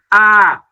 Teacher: আ ধ্বনির জীবের অবস্থান থাকে নিচে।